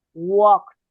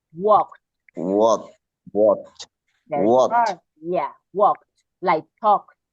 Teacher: We don't pronounce the L. And we pronounce like a walked. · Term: L sound